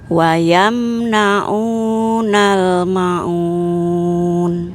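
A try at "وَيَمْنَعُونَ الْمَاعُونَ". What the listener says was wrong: Baik, ma-nya panjang Ibu, 2 harokat. Ma'un. Ma'un.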